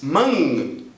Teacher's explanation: o livro recomenda você pronunciar manga e parar um pouquinho antes de realizar o seu G Quando você diz mang e no meio você vai sentir lá